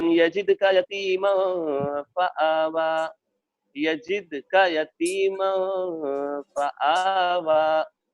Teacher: دال اخیر میں آئے، آیت پر آئے، ساکن ہو تو آواز پلٹتی ہے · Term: حروف قلقلہ